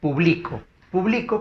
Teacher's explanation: la penúltima sílaba es la mayor fuerza de voz. Se llama esto palabra grave.